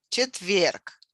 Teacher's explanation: Четверг with a stress on the second syllable, on the last syllable.